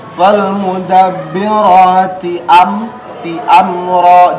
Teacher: Falmudabbirati am ti amra, jelas amra tidak dipantulkan. Ingat, mim bukan huruf qalqalah, maka tidak dipantulkan.